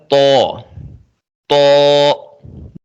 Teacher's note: تو کا مخرج ہے زبان کی نوک اوپر کے دانتوں کی جڑ سے